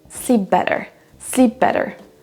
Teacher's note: Certes, on a un P et ensuite un B, mais on va les lier entre eux.